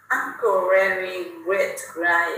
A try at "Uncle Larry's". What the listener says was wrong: Đấy, lại không xì. Cái chữ Larry lại không xì. lại quên xì.